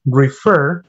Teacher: Has two syllables, but the second syllable is stressed. I mean, the pronunciation is refer, not refer.